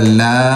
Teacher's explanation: اس پر جو ہے وہ 5 الف کے برابر مد کی جائے گی، کھینچا جائے گا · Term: مد لازم